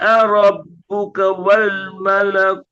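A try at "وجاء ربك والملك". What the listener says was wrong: tinggal kunya jangan panjang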